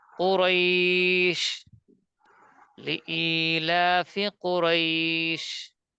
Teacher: লিনের হরফ টান হবে না এরপরে অক্ষর থামার কারণে এক আলিফ হয়ে যাবে